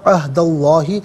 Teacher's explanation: اسم اللہ کی حرف لام سے پہلے والے حرف دال پر زبر ہے تو اسم اللہ کی حرف لام کو پر کر کے پڑھا جائے گا